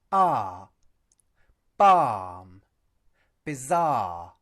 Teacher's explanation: Note also that the word 'balm' does not contain an /l/ sound.